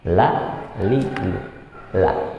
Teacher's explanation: Dia tipis ya, nggak dibaca tafkhim, tapi tipis · ujung sisi lidah, sisi lidah bertemu dengan gusi atas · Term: huruf lam